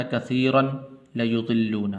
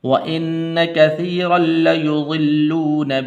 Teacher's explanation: را کو آگے لام کے ساتھ ملانا ہے